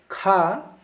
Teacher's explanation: खा ये आता है कंठ में, इसका उच्चारण कंठ के द्वारा होता है। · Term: कंठ ध्वनि